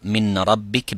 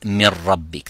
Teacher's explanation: the noon sakina completely disappears, as well as its quality of the ghunna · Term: complete idgham